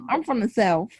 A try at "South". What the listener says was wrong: First time we say South with an F. Okay, it's SOUF in the South. Okay, so you put the TH on there, you was all wrong from the dub. Okay, it's South. Okay, SOUF. SOWF. South. Okay, that's what we say.